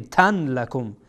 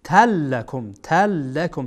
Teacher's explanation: اینجا بعد از تنوین لام آمده، لام از حروف ادغام هست، اینجا لابد باید ادغام بکنین.